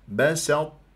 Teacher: الي يدك ما تقول بسطت لا تفخمها تجعلها صاد بس بسط تروح الى اطباق الطاء ثم التاء